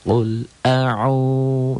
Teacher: Dibaca panjang 1 alif atau 2 ketukan. Qul a'u 2 ketukan. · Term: mad tabi'i